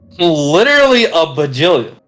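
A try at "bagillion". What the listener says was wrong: There's a G in there, you fucking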